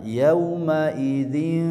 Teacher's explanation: Yaumaidin suara tanwin yang dibaca ikhfa